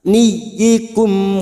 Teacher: mim sukun bertemu wau Idhar Safawi dibaca jelas tanpa mendengung